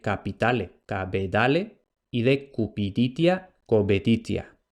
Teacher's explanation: Para lo que nos interesa a nosotros, la sonorización de oclusivas sordas, es decir, las oclusivas sordas intervocálicas, pasan a ser oclusivas sonoras. Entonces lo que en latín era P, en una etapa posterior será B.